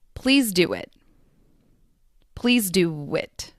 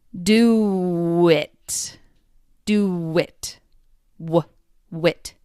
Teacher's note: There is a soft w sound between do and it.